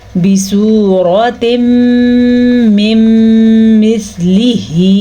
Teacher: ان دونوں کو جب ہم ملا کے پڑھیں گے تو غنّے کی آواز بھی آئے گی اور ادغام ملانے کی وجہ سے، ملانے کو ادغام ہی کہتے ہیں. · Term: ادغام بالغنہ